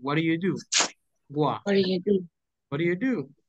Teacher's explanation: We eliminate the T, the consonant